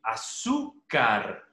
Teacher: Azúcar termina en R y la mayor elevación de voz está en la penúltima sílaba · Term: llanas o graves